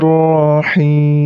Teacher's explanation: panjangnya 2 harokat huruf H nya harus jelas him itu panjangnya 2 4 atau 6 harakat karena hukum bacaan